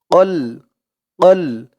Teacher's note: কফের আওয়াজটা গলার ভেতর থেকে ধাক্কা খেয়ে আসবে